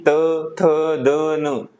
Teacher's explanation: दंत के माध्यम से बोले जाते हैं। जैसे कि त, थ, द, न। जीवा हमारी दांत के दांत को स्पर्श कर रही है।